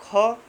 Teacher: अगर बोलेंगे आप ख तो उसमें ज़्यादा समय लगता है और ज़्यादा वायु बाहर निकलती है। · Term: महाप्राण